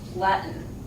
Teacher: The letter T is made at the back of the throat. It's called a glottal stop.